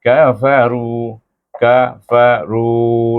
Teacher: ru tu dibaca panjang iaitu hukum mad asli